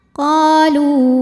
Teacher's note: qa dihukumi dengan mad tabi'i zahiri sebab ada alif yang didahului baris fathah, maka huruf qaf kita panjangkan 2 harokat.